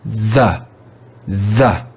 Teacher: do you hear the schwa sound at the end of the word the